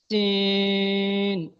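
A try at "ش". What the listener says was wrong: তিন ওই শিন, একটু ভারী আওয়াজে, শিন।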